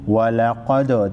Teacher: वलक़द दाल साकिन को हिलाकर पढ़ेंगे।